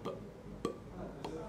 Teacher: Então não é esse som que está descrito ali, ali é, é esse pezinho do início, então seria algo como p, p, p, que é um oclusivo, é, bilabial, porque envolve os dois lábios, oclusivo porque ele explode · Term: oclusivo bilabial desvozeado